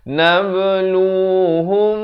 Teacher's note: jangan lupa ikhfa syafawi juga dibacakan 2 harakat panjang